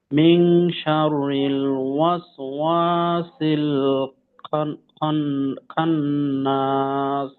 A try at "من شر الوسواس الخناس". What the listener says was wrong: দুইটা গুণনা আছে এখানে, প্রথমত মিং এবং খন। তো গুণনাতে আর একটু সময় বাড়াতে হবে। আর তার সাথে খয়ের উচ্চারণ তো মোটা উচ্চারণ, তো খা যেন না হয় খ, খন্না।